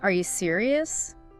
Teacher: With that upward inflection of disbelief, you copy that.